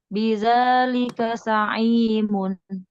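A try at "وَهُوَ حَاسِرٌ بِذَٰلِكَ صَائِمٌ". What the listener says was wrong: Za. Ya, baik. Hati-hati. Agak mirip sin tadi.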